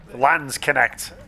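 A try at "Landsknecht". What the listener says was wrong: I thought it was Landers necked. So I think it's not land, it's Landers because Lander as in like what's it called, like state. How do you translate Lander? It's like a kind of the provinces of Germany are called Landers.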